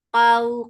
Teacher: qaf is heavy, and this waw is lean. So when you are attaching fatha with waw, you are making it soft.